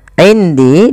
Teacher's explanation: Di sini ada bacaan ikhfa maka suara nunnya samarkan kepada huruf dal.